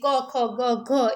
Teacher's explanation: ક ખ ગ ઘ એ કંઠ માંથી બોલાય છે તો ક છે એ કેવો છે તો કે ભાઈ કંઠ્ય અઘોષ